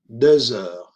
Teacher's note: la X que no se pronuncia, pero sí sale en la pronunciación como un sonido Z, como una S sonora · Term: liaison